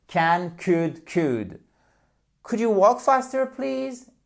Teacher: Et on ne prononce, évidemment, très important, on ne prononce pas le L